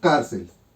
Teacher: sílaba tónica en car por lo tanto es una palabra grave